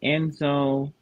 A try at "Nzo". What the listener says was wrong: In this case, Nzo, N is just for nasal. But by the way, you don't read N Nzo. You read Nzo. Nzo. But your first letter is not N. N is just your nasal. first letter. Nzo, yeah.